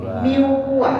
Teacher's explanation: Mau bunyi nunnya Pak? Hilang. Hilang sebab nunnya lah dimasukkan ke dalam waw. Lah dimasukkan. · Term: idgham